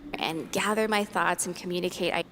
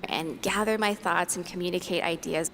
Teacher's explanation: We have gather with the voiced th, and we have thoughts with the voiceless th.